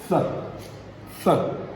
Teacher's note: And they are dental fricative sounds.